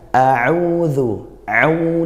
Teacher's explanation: Di sini kita memiliki Dammah yang diikuti oleh Wāw sukūn. Jadi bacaannya adalah Mad Tabi'i. Panjangnya adalah satu alif atau dua ketukan vokal (harakat).